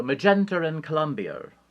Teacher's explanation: you put an r where it doesn't belong and take an r from where it might belong